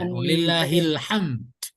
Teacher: Hanya du-nya tidak dibaca, jadi walillahil hamd. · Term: wakaf